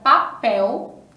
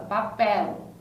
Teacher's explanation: aqui a gente fala a palavra papel com som de u